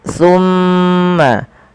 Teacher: pada lafal summa tahan suara mimnya sepanjang 2 harakat. Summa jangan langsung dilepaskan karena ia ada bacaan gunnah pada lafal bacaan ini.